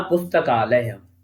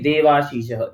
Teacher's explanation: उदाहरण के तौर पे है पुस्तकालय है, पुस्तक में आ है, आलय का आ है, दोनों आ मिलकर के दीर्घ आ हो गया, मिलाने पर बना पुस्तकालय।